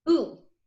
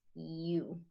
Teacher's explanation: I don't slide at all. It's one sound, one movement, as opposed to one sound, two movements, you.